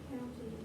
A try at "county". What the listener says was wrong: not counties. Read the whole word. See, what's happening is you guys are reading the first part of the word and then guessing.